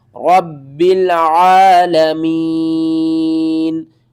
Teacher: وقف کی صورت میں نون کو ساکن کر دیں گے